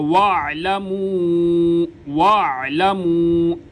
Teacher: عین کو گلے کے درمیان سے ادا کیا جاتا ہے۔ عموماً غلطی کرتے ہیں لوگ، واعلموا پڑھ دیتے ہیں، جھٹکا دیتے ہیں، یا پھر عین کی جگہ پہ حمزہ پڑھ دیتے ہیں، دونوں غلط ہے۔